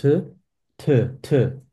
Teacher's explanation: lots of air gets to your palm